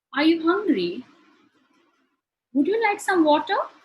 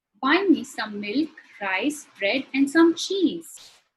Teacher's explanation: In all three sentences, my intonation rises towards the end.